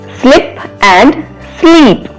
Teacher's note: In these pairs, medial sound segment is different, that is short I and long I.